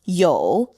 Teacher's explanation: vocal fry for the third tone